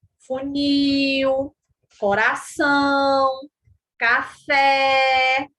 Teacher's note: Dependendo destas posições, né, a sílaba tônica ela pode ser classificada em oxítonas, né, que são palavras oxítonas. São palavras cuja sílaba tônica é a última sílaba